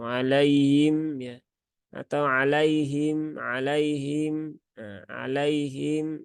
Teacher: ketika sifat khofa ini muncul maka suara ha itu akan menjadi samar sehingga terdengar seolah-olah seperti bunyi h atau bainaabaina di antara keduanya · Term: sifat ee khofa